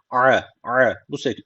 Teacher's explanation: Bu harf boğazdan çıkması gerekiyor. A bu şekilde. Yani Türkçedeki a değil